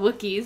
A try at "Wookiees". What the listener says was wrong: Not Wookiees. Wookiees. You said Walkie and Wookie. It's Wookie.